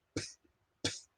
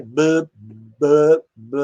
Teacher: A labial sonora, por que é sonora? Porque a corda vocal vibra junto com a oclusão. Quando você põe os dois lábios aqui, se você não vibra a prega vocal, ela é muda, então é P. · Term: labial muda